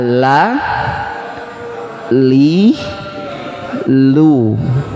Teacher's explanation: Kita lihat huruf lam. Makhraj huruf lam ini keluar dari sisi lidah bagian bawah, nah ini dengan langit-langit.